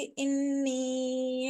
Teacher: इन्नी में नून मुशद्दद है तो गुन्ना के साथ पढ़ेंगे, इसके आगे मद्दे मुनफसिल है तो 5 फिंगर स्ट्रेच करके हम इसको पढ़ेंगे।